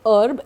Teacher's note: So it is herb, and E is stressed, H is silent.